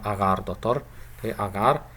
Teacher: Here in the initial syllable we have a simple short vowel, short a vowel, and in the second syllable we have a long vowel. And many linguists argue that the length of this long a in the second syllable is equal with the length of this a vowel in the initial syllable.